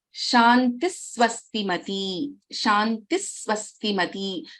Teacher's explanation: here we do not pronounce the complete visarga. It is pronounced as Shantis Swastimati.